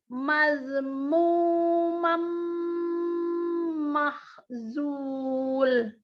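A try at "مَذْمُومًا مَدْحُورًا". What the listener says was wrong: Bagus, tapi zal sukunnya agak mantul. dari mad ke mu aja dulu. Madmu coba. Jadi kalau perlu gigit-gigit lah tuh lidah. Nggak boleh pokoknya mantul. Mazmu ya. Harokat agak-agak kebalik-balik dikit tadi.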